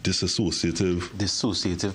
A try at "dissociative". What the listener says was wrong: No, not associative. Dissociative.